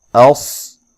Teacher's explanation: اس، حمزہ کو تحقیق سے پڑھنا ہے، صاد کو خوب موٹا ادا کریں موٹی سیٹی کے ساتھ، اور صاد کو ہلانا نہیں ہے۔